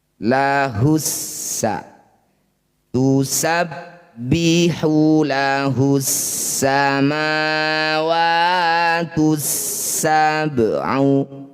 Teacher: alif dan lamnya abaikan. Langsung baca pada huruf yang bertanda tasdid. Setelah alif dan lam lahussa tusabbihu lahus samawatus sab'u. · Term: alif lam syamsiyah